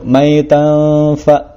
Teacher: Di sini ada tanwin bertemu dengan fa, hukumnya adalah ikhfa, dibacanya dengung.